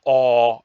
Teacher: all as in wall the lowest and backest of vowels you will notice that your tongue is is Shifting backwards in · the lowest and backest of vowels, you will notice that your tongue is shifting backwards in a way that opens up a larger part of your mouth, but hunches up towards the back instead of towards the front.